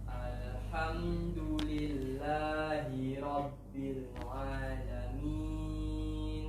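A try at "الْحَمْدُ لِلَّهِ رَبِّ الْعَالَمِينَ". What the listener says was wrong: Nah, kurang a-nya kan? A harus sama dengan lillah. Cek lillahi. Lillahi. Alamin. Ala. Ala. Jangan angkat lidah langsung. Rabbil ala. Rabbil ala. Nah, nampak panjang a baru ke la.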